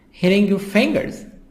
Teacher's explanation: Here T soft D between two vowels I and I.